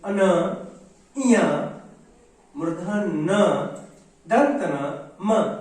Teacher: नाक की सहायता से उच्चारण होने के कारण इन्हें नासिक व्यंजन कहा गया